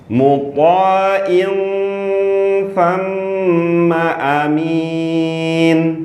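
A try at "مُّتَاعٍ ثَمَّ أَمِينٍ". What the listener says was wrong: Huruf ain lebih jelas. Ain. Jadi masih kayak hamzah. Ulangin, A-nya panjang pendek. Ainnya lebih jadi. Sempurnakan dulu. Ain. Ain. Jadi langsung masuk ke makhraj tha.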